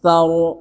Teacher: Inna a'tainakal kautsar. Ra-nya di sini adalah tebal.